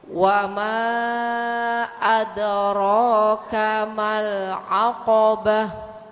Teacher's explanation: kalau Ibu wakaf atau berhenti menjadi suara ha